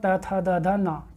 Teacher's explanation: दंत वर्ण मतलब जिसका उच्चारण तब होता है जब जीभ जो है दांतों को टच करती है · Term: दंत्य वर्ण